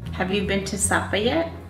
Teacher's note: Americans tend to have a steady rise